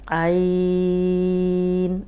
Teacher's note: عین میں حلق کی طرف پیچھے کی طرف زبان کو دبائیں گے تو یہ نکل آئے گا لیکن جھٹکے سے نہیں پڑھنا، عین آرام سے نکل آئے گا۔